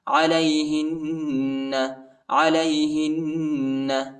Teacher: ها को नून के साथ मिलाएंगे और गुन्ना करेंगे